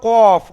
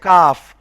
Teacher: প্রথমটা হলো কফ, মুখ গোল করে কফ বলতে হচ্ছে, আর তারপর একটা বলতে হচ্ছে কাফ